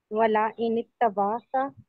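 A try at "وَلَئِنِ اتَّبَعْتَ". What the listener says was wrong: हरगिज़ वाला लाम नहीं है, अलबत्ता वाला लाम है, और उसको लंबा नहीं करना, वाला इन तबाता।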